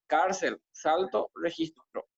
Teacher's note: llamas o graves son aquellas en las que la fuerza pronunciada la fuerza de la pronunciación se ejerce en la penúltima sílaba